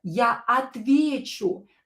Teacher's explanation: The stress is in a stem of the word. So not on the U.